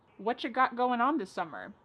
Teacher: Whatcha is what plus you. You becomes cha.